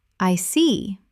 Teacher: When you show understanding with, I see, your tone drops slightly to show calmness